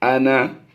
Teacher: اس پر یہاں پر گول دائرہ یعنی زائد الف کا نشان ہو تب بھی یا نہ ہو تب بھی ہم نے اسے لمبا نہیں کرنا۔